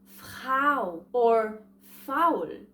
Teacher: The first diphthong in German is A and U, which makes ow.